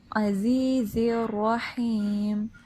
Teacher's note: جب بھی را کے اوپر زبر آتی ہے ہم را کو ہیوی پڑھتے ہیں، پر ادا کرتے ہیں، ٹھیک ہے، زبان کی جڑ کو اوپر تالو سے لگائیں